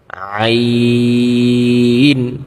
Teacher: আইন উচ্চারণ ক্ষেত্রে আমাদের গলা একটু চাপ দিয়ে পড়তে হবে কন্ঠতে তাহলে কিন্তু আইনের উচ্চারণটা সুন্দর হবে এবং নরম আওয়াজে পড়তে হবে।